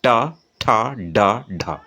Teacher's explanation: दांत से थोड़ा सा पहले तालू से थोड़ा सा आगे जो हल्का दांत के पीछे उभरा हुआ हिस्सा है उसे हम मूर्धा कहते हैं। · हल्का जीभ टेढ़ा होगा और दांत से थोड़ा सा पीछे जाके टन से टकराएगा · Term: ट वर्ग